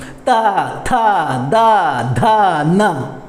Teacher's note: त जब आप उच्चारण कर रहे हैं तो आपकी जीभ कहाँ टच कर रही है, किस स्थान को स्पर्श कर रही है, आपके टीथ को स्पर्श कर रही है, आपके दांतों को स्पर्श कर रही है, छू रही है।